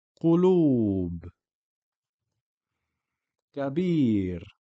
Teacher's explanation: Fatha on the kaf, so it's just a short sound, ka, and then bir, ya after the ba kasra makes bi become bi.